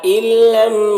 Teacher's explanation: نون کو لام سے ملا کر بغیر غنہ کے پڑھیں گے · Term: ادغام تام